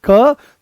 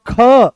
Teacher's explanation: जैसे ही आप बोलोगे क तो बड़ी सरलता से निकल आया। पर जैसे ही बोलते हो आप ख तो जोर लगाना पड़ा।